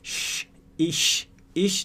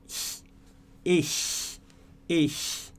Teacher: E o CH aqui, ele está fazendo um som de que não é um X, então você não vai falar ish, não existe, não é X, então você vai falar com ar passando pelo céu da boca, mas você não vai fechar, então vai ser basicamente a sua língua encostando lá no céu da boca, mas deixando um espacinho para passar ar, e vai sair mais ou menos assim, ó.